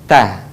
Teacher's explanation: Jadi, melafalkan huruf ta tidak menyentuhkan ujung lidah dengan gigi ataupun dengan langit-langit. Tetapi, huruf ta menyentuhkan ujung lisan kita dengan tempat tumbuhnya gigi atau disebut dengan gusi dua gigi seri bagian atas